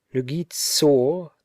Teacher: The first word, the nominative, is pronounced more rapidly with less stress. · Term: construct state